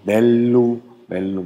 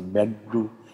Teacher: Zunge nach hinten geklappt und stimmhaft. Das ist dieses D mit dem Schwanz dran.